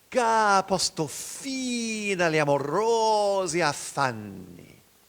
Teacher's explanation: Notice the exciting contrast between the long note on fine and the short notes agli amorosi affanni. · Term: Long notes long, short notes